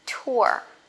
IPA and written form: tʊə (tour)